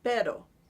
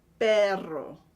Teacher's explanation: the difference between pero with a flap R and perro with a trilled R is the difference between those two words.